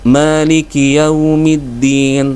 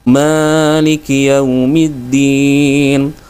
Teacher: terdengar ya agak kepanjangan Ya seperti tiga sampai empat ketukan